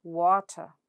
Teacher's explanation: elongated and said a little louder than the next syllable, ter.